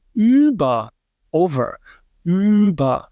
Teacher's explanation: when you pronounce that, you have to really round your lips to get that ü sound out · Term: front rounded vowels